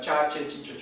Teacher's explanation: sibilante posalveolar sorda con aire pulmonar agresivo es la que usamos nosotros